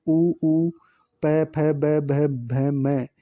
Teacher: ओष्ठ्य वर्ण देखो जो होठ से बोले जाते हैं